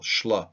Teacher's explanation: They didn't like the shla consonant cluster, S-H-L, shla, all slurred together.